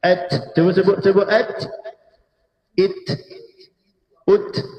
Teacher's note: huruf ketika sukun ada bunyi angin yang mengalir. Nafas yang mengalir.